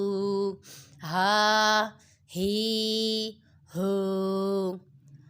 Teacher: ہا حروف حلقیہ میں سے ہے، یہ حلق کے نیچے والے حصے سے ادا ہوتا ہے